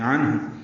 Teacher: عین وسط حلق سے ادا کریں گے، نون ساکن پہ اظہار ہے